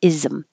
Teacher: So it doesn't look like it, but there, between this S and the M, we have to make some kind of noise to make that transition from z to M